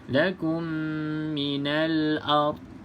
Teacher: pastikan huruf dad ni tidak ada lantunan